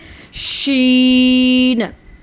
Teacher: शीन की आवाज़ मुंह में फैल जाती है